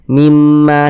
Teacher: Kita gunakan suaranya, kita tahan, kita panjangkan sejenak juga. Mimnya kita tahan, kita panjangkan. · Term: gunnah musyaddadah